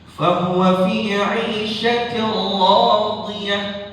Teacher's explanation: ra-nya dibaca tafkhim atau dibaca tebal